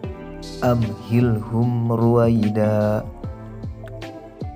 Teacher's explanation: hijaiyah kecuali mim dan Mbak dan cara membaca Izhar Syafawi adalah menyuarakan mim mati dengan jelas di bibir serta mulut tertutup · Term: idhar syafawi